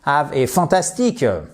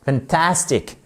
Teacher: l'accent tonique au bon endroit, ici sur la deuxième syllabe